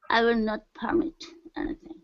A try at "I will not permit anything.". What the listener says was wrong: Instead of permit, it's permit. Stress at the end.